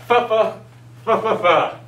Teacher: it is the labial fricative sound, meaning that it is made with your lips, but blowing air.